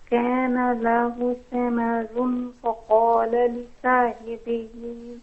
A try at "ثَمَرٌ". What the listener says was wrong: Okay, we'll say faqala, not faqala. I know that the qaf is confusing because it is one of the tafkhim letters, but the fa is not.